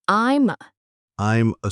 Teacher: We link the M in I'm to the A. It sounds like I'm I'm like I am thinking?